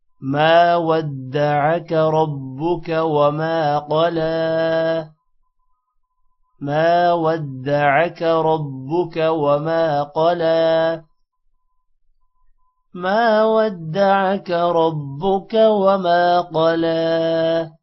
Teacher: ربک را با کے ساتھ ملے گا اور را موٹا بھی ہوگا۔ وما الف کی وجہ سے ما لمبا ہوگا۔ قلا قوف موٹا ہوگا اور لام پر کھڑی زبر ہے اس وجہ سے لام تھوڑا سا لمبا ہوگا۔